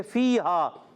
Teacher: یا مدہ الف مدہ، دونوں کو ایک ایک الف کھینچیں گے